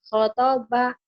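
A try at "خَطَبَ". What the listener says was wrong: Kho, bukan kotoba tuh Bu. Kho, khotoba.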